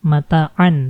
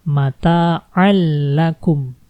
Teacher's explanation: Nah, ini kan mata'an tadinya, tapi karena ketemu huruf la, maka bacaannya jadi dimasukkan langsung ke huruf la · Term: idgham bila gunnah